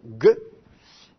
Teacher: Normalement, un guimel avec un point devrait être prononcé « ge », donc de façon occlusive, « ge ».